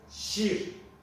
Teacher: Kürtçedeki İ sesi, Türkçedeki İ sesinin uzun okunuşu gibidir. İ, Kürtçedeki uzun seslerdendir arkadaşlar.